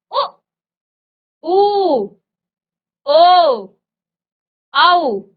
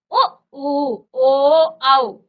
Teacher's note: यहाँ पर जिन स्वरों के उच्चारण में होठों का आकार क्या हो जाता है, गोल हो जाता है। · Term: वृत्ताकार